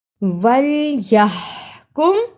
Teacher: وَلْيَحْكُمْ، یہاں ہا کی صحیح آواز نکالی۔ اس ہا کی آواز کو حلق سے رگڑ کر نکالنا ہے